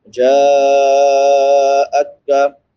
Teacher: جیم کے بعد مد متصل ہے، حمزہ اسی کلمہ میں ہے، 3 الف سے لے کے 5 الف کی مقدار تک اس کو لمبا کریں گے